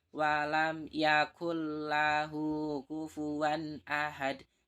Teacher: ada nun sukun atau tanwin bertemu dengan huruf lam dan roh cara membacanya berarti cukup dimasukkan tanpa disertai dengan dengung contohnya walam yakullahu kufuwan Ahad Yakul lahu sini ada nun sukun · Di sini ada nun sukun bertemu lam, maka wajib dibaca dengan memasukkan tanpa disertai dengan dengung. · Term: idgham bilagunnah, idhom bilahunah